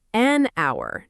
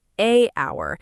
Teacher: We say an hour, not a hour, because the H is silent, so the word actually starts with a vowel sound.